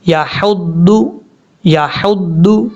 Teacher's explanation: ہا بریک ہے، اس کو بھاری ساؤنڈ کے ساتھ نہیں پڑھنا ، ضاد حروف مصالحہ میں سے ہے، پر پڑھا جائے گا،